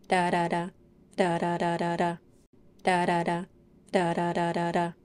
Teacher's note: to make a fast D sound just let the front part of your tongue bounce against the roof of the mouth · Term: flap t or d sound